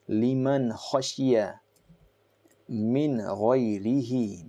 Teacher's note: Again, you should not say or pronounce it liman khashiya. No, there is no stoppage or prolongation of the gunna sound. It will be clear and distinct, very clear, fluid. Liman khashiya min ghayrihi, because after this noon sakin, you have one of the huruf halaki, which is ghain.